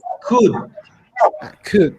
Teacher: you need to take out the L sound